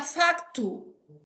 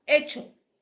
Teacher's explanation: El grupo consonántico CT evolucionó a che, o sea, cambió a che. En latín era factu.